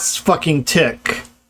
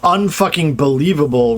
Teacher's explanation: we've got a stressed syllable immediately before the insertion